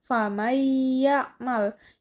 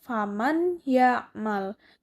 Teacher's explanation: karena di sini ada hukum idgham biguna, jadi dibacanya dimasukkan atau dileburkan.